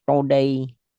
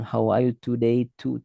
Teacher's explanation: Kalau orang India, huruf T-nya itu di langit-langit. Jadi ketika bahasa Inggris, today. Kalau Amerika atau Inggris British kan mungkin belakang gigi. Dan agak ada percikan angin.